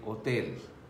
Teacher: it will be written same but it will be pronounced differently with h being silent so it would be hotels uh bus is very easy word